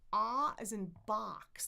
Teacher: My tongue is way far in the back. My jaw is super open.